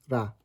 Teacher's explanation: it's pronounced like a tap of the tip of your tongue against the front of the roof of your mouth. Kind of like if you know a dialect of English that would pronounce the word butter as butter.